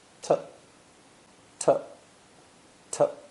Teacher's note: The word to, as I've mentioned before, is unstressed and pronounced t, t, t.